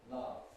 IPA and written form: lʌv (love)